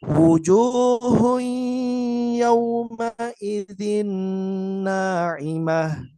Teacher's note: Jadi disamarkan antara nun dengan huruf ya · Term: idgham bi gunnah